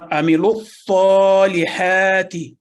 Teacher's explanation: واو الف الف اور لام یہ شامل نہیں ہوئے اس میں تلفظ میں۔